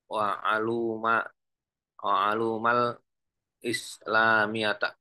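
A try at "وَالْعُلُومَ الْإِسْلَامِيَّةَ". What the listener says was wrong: wal uluma. Wal uluma. Jama' dari ilmun. Bukan alum, tapi ulum.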